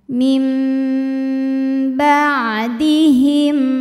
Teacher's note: sebab ada nun sukun menghadapi huruf ba, maka bunyi nun diganti bunyi mim. Tadinya min jadi mim, lalu dengungkan, lalu tahan bunyi m-nya. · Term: iqlab